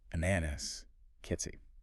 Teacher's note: the short A is quicker, sharper, a bit like the A in apple maybe, or cat